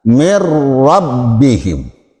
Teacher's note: Kemudian nun mati berhadapan dengan ro. Ro adalah bila gunnah tanpa dengung. Cukup bacanya asal didabel aja, digentak.